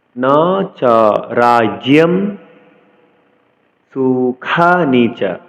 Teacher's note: অনুসার কোন শব্দের পরে থাকলে আমরা অনুসারের উচ্চারণ মসন্ত করব অর্থাৎ ম এর অর্ধেক উচ্চারণ করব এজন্যই নাচা রাজম সুখানিচা সুন্দকে এস এর মত উচ্চারণ করতে হবে